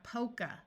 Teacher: A at the end of a word usually schwas to make a muffled sound. That sounds like a short U.